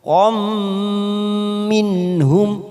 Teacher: huruf qaf fathah tanwin bertemu mim idgham bi gunnah kita tekan 3 ketuk. Qam minhum.